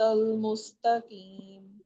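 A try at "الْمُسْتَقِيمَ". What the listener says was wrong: مستقیم قاف کو مخرج سے ادا کریں. المستقیم.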